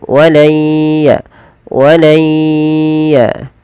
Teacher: Jadi tidak hilang langsung, tapi dia masih menyisakan suara nun yang sedikit. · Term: idgham naqis